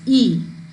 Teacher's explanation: a front ball that means it is when it is pronounced it is pronounced with the front part of the tongue and the tongue is raised to the closed position